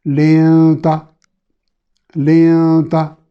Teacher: نون کے مخرج سے زبان کی نوک کو ذرا پیچھے رکھ کے غنہ کو چھپا کے کریں گے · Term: اخفاء